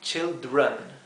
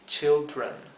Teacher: deben esforzarse en pronunciar la R con la parte de atrás de la lengua, como en inglés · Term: la R del inglés